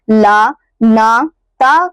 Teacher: ल न त का अगर हम लोग उच्चारण कर रहे हैं दोस्तों तो इसका इसका उच्चारण स्थान हमारा दंत है